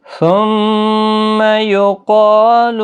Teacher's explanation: قاف حروف مستعلیہ ہے، پر پڑا جائے گا، الف مدہ بھی ہے، ایک الف کی مقدار کے برابر کھینچ کر بھی پڑا جائے گا.